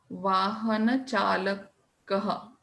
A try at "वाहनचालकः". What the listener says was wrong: Vahana chalakaha, not vahan chalakaha. In Hindi it would be vahan chalakaha, but in Sanskritam there is no halanta here. So you have to say the word completely, the sound. Vahana chalakaha.